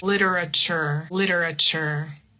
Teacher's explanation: any word where you have the t u r e we say like chure. It's similar to the ch.